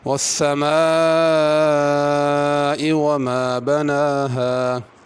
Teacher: السماء پہ مد ہے، اس کو کھینچ کے پڑھنا ہے۔